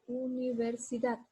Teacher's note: Aquí elevo la voz en la sílaba da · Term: sílaba tónica